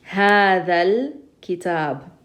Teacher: kaf here doesn't use our tongue, therefore it's qamari, so we're going to pronounce the lam